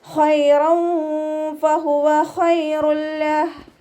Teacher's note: ഖൈറൻ ഫഹുവ ഖൈറുൽ ലഹ് ഖ ഇസ്തിഅലാൻ്റെ ലെറ്ററാണ്, ഉയർത്തിയിട്ട് ഉച്ചരിക്കുക. നാവിൻ്റെ ബാക്ക് മുകളിലേക്ക് ഉയർത്തിയിട്ട് തഫ്രീം ചെയ്യുക.